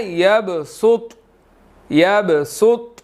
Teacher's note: یہاں پر میری طا پر آواز رک گئی ہے، میں نے ہلایا نہیں ہے